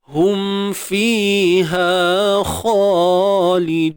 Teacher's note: Ulaika ashabun nari hum mim mati bertemu fa izhar syafawi. Jelaskan sebutan mim.